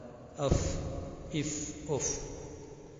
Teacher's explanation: مخرج نمبر 15، ثناء علیہ کا کنارہ اور نیچے کے ہونٹ کی تری والا حصہ اس سے فا نکلتا ہے.